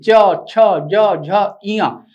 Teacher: तालू की मदद से बोले जाने वाले व्यंजन जीभ ऊपर उठेगी और तालू को छुए गी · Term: तालव्य व्यंजन